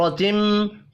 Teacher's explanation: را کو زبر کی وجہ سے پر پڑھنا ہے، میم مشدد پر غنہ کریں گے.